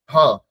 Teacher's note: হ উচ্চারণ করতে গেলে শুধুমাত্র কণ্ঠ থেকে একটা হাওয়া বাতাস একটা বেরিয়ে আসছে